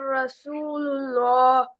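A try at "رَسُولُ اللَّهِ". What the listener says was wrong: जी बेटा, रसू में रा को आपने जो है बारीक वो पढ़ा है, रसू रॉ को मोटा पढ़ेंगे।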